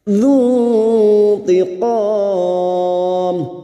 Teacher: nun sukun bertemu ta ikhfa hakiki, kita samarkan bunyi nun sukun dan mendengung selama 3 harakat · Zu tiqam, tiqam bertemunya mad dengan huruf itu yang dibaca waqaf mad arid li sukun 4 harakat kita panjangkan